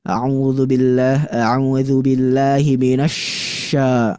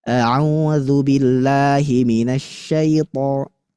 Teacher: Menyebarnya angin dalam mulut sehingga membaca huruf shin gak boleh keluar. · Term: tafasyi